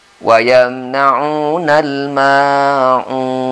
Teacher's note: Ma-nya panjang, tapi panjangnya cuma 2 harakat.